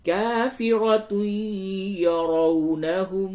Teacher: تنوین کے بعد یا ہے، ادغام مع الغنہ ہوگا